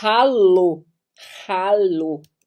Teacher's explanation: o h ele não é mudo como no português ele é aspirado Então você dá uma respirados você vai falar o h no